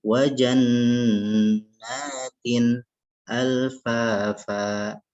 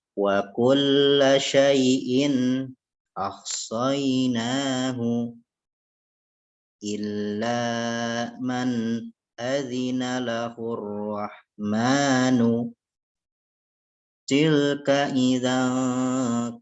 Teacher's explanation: Maka nun sukun dan tanwin ini dibaca jelas, ya, tidak didengungkan apalagi dibaca samar, ya, karena bertemu dengan huruf-huruf halki yang sewaktu di pembahasan makharijul huruf kita sudah bahas ada 6 huruf: hamzah ha, ain ha, ghin kha, ya. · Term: izhar halki